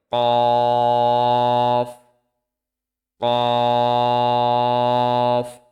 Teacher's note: জিহ্বার গোড়া তার বরাবর উপরের তালুর সঙ্গে লাগিয়ে উচ্চারিত হয় কফ।